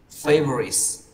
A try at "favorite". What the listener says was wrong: Không có F, favorite. Lúc nãy em đọc là favorite, tức là thêm sắc vào cái từ read đấy, tự dưng đẩy nó thành trọng âm đấy.